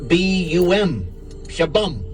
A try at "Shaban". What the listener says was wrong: No, it's with N. Shaban.